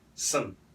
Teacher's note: The word some actually is like fun. However, most Americans, we're going to say it really fast. We use a schwa sound